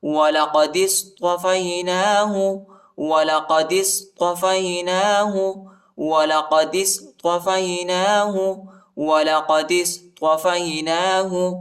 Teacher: دال کو صاد کے ساتھ ملائیں گے، الف نہیں پڑھا جاتا، الف پر حرکت نہیں ہے